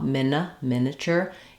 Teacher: it's just a short reduced second syllable without a clear vowel